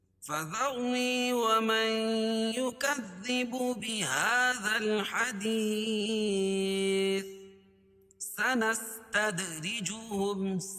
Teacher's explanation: دال پر قلقلہ را باریک کیونکہ را کے نیچے زیر